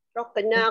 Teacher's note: Ra dibaca tebal. Qaf dilantunkan. Hukumnya ialah qalqalah sughra.